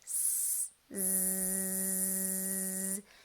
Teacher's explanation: So the Z sound, zzz, teeth together, lips retracted, tongue tip up behind the front teeth, but we're gonna turn our voices on. We're gonna feel that buzz down here because we're also gonna feel the buzz by our tongue tip as the air goes over.